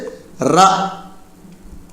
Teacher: நாவின் நுனி மேல் அண்ணத்தின் முதல் பகுதியை தொட்டு வருவதால் தோன்றும் எழுத்து